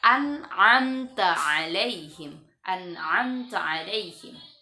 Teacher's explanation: masuk hukum izhar, maka membaca nunnya jelas